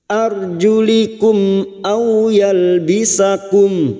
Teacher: ha tahtiar ro sukun yang didahului fathah kita baca tafkim arjulikum mim sukun bertemu Hamzah Idhar syafawi mim sukun dibaca jelas tanpa mendengung · au fathah bertemu sukun kita lunakkan. Au seperti bertemu dengan huruf abjad u. Au yalbisakum, yalbisakum, karena kita wakaf di sini maka kita mengulang pada kalimat au yalbisakum. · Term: idhar safawi